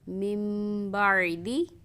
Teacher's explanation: ہم یہاں پہ من کی بجائے میم کی آواز نکالیں گے اور غنّے کے ساتھ ادا کریں گے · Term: اقلاب